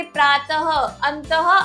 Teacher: विसर्ग की मात्रा इसका उच्चारण ह के समान होता है। जैसे प्रातः अंतः आदि जो विसर्ग होता है उसका उच्चारण हम ह की तरह करते हैं।